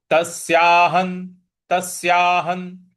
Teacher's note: तस्याहन ह के बाद ह पर जो विसर्ग है उसके आगे न है तो इसका उच्चारण भी हमें न ही ले आना है।